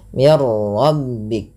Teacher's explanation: nunnya hilang secara utuh karena langsung ke huruf ro dan ro dibaca dengan tebal. Hati-hati dalam melafalkan ro tidak dibaca dengan mirbik. · Jangan banyak sekali takrir pada huruf ro tapi sekali saja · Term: idgham kamil